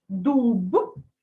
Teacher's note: вимовляй дзвінкі приголосні звуки всередині слова наприклад Дудка та в кінці слова дуб дзвінко